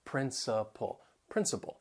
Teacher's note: they have three syllables the stress is on the first syllable that second and third syllable you'll hear that schwa sound